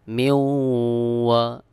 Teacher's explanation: মিম ওয়াও জের মিউ, ওয়াও জবর ওয়া, মিউ ওয়া। এখানে নুন সাকিনের পরে ওয়াও ইদগাম গুন্না, নুন সাকিনকে বাদ দিয়ে ওয়াওকে যুক্ত করতে হবে।